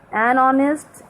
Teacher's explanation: because H is silent here and we pronounce honest. A is a vowel sound, that's why we should write an before honest.